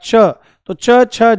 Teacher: च वर्ग में आपका च, छ, ज ये तालव्य हो जाएगा